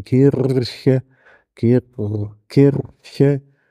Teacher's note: das ist dieses C mit dem Haken unten dran also ein palataler Frikativ